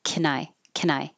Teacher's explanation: This n will connect to the i.